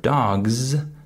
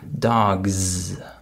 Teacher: the final s is voiced it has vibration